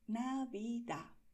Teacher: en muchas regiones sencillamente esta D final se ignora. Se escribe, pero no se pronuncia.